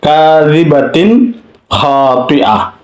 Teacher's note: তারপরে আসুন তানবিনের পরে খ, তানবিনের পরে খ আসলে কিভাবে উচ্চারণ করতে হবে একদম শেষের লাইনে দেখুন, কাযিবাতিন খাতিআ, কাযিবাতিন খাতিআ, কাযিবাতিন, তিন এখানে তানবিন, তিন তা দুই যে তিন এটা তানবিন, তারপরে খ আসছে খাতিআ, কাযিবাতিন খাতিআ, এখানে স্পষ্ট ইজহার করতে হবে